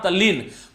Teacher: त के बाद में ल आया तो ये त भाई साहब भी ल में परिवर्तित हो गए और शब्द बना तल्लीन।